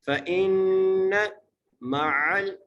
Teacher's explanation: فإن مع، فا زبر فا، حمزہ کو نون سے ملانا ہے اور نون پر تشدید ہے اس لیے ہم نون پر غنہ کریں گے۔ فإن مع، میم زبر ما، عین کو لام سے ملانا ہے، اگلے عین کو سین سے ملانا ہے اور سین کو سیٹی سے پڑھنا ہے۔